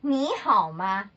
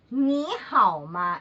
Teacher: So, when 2 third tones are together, the first third tone, it becomes second tone.